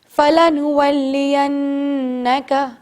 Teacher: جب جب نون کے اوپر تشدید ہوتا ہے آپ جانتے ہیں اسے کہتے ہیں غنہ. 2 سیکنڈز تک ناک میں سانس لے جا کر غنہ کرنا ہے